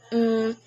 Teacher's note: fourth one is the nasal the nasal consonants are created when you completely block airflow through your mouth and let the air pass through your nose